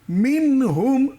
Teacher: হা রয়েছে। হা আসছে, তাই এখানে গুন্না হলো না।